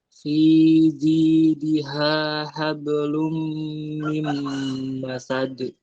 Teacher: Hablum mim masad, ditahan. Kalau ada mim tasydid ditahan.